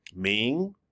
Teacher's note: Here we have one that goes up, like a question. Ming, like I'm asking a question.